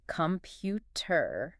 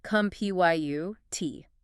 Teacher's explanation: Right, pronouncing every vowel. But a native-like speaker reduces the unstressed vowels to a schwa, so it becomes cum-pyu-t.